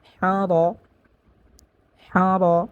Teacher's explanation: রর উপরে জবর আছে, তো এখানে রকে মোটা করিয়া পড়তে হবে